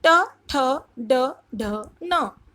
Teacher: ट वर्ग का मतलब मूर्धा। मूर्धा इसका उच्चारण स्थान है। मूर्धा मतलब जीभ मुड़ जाती है जहां पर। ट ठ ड ढ न। टवर्ग के व्यंजनों को हम दांत के पास वत्स स्थान से बोलते हैं।